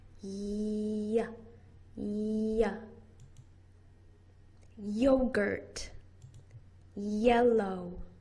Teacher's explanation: Your voice box is turned on, and it's a long continuous sound.